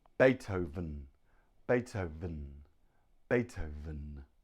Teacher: the V is made by putting your teeth on your bottom lip and it vibrates